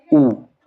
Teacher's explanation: हमारे ऊ बोला हमारे होठ जो है वो गोलाकार हो गए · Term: वृत्त मुखी